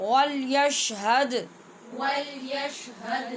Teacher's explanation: واو کو گول کرنا نہیں بھولیے اور دال پہ قلقلہ بھی نہیں بھولنا